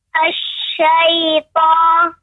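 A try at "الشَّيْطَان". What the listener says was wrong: Jangan boleh dari hidung. Tertahan kan di hidung kan? Terasa nggak? Ada terasa seperti dengung, seperti suara tertahan di hidungnya, huruf to-nya. Ada, berarti belum tepat. Berarti itu kurang tepat.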